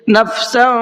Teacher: اس تنوین کی آواز کو تھوڑا سا ناک میں چھپا کر کے پڑھتے ہیں